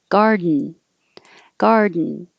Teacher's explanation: You're making your tongue go to the D position, which is the same as the N.